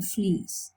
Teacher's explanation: So the front of the mouth moves here, close to the hard palate. So we call it a close vowel, close or high, the fleece.